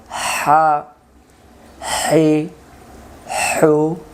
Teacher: লম্বা হা হলকের মধ্য থেকে শোষ করে পড়তে হয়।